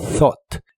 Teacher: la th de esta palabra se pronuncia soplando con la punta de tu lengua justo debajo de tus dientes de arriba thought y la ugh no se pronuncian Así que es thought